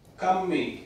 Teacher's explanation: i don't hear much aspiration come that sounds like a pretty clear zero onset zero vot